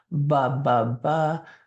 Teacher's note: with the be you're just kind of closing your mouth very relaxed your lips are touching very relaxed together